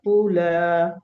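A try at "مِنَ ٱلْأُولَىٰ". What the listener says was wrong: মিনাল উলা, মিনটা ঝরে গিয়েছে।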